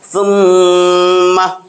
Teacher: গুন্না কই থেকে আসবে নাকের বাঁশি থেকে গুন্না গুনগুন আওয়াজে উচ্চারণ করতে হয় আর এক আলিফ পরিমাণ ধরে রাখতে হবে গুন্না হইলো এক আলিফ বরাবর ধরে রাখতে হবে সুম্মা তাহলে গুন্না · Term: ওয়াজিব গুন্না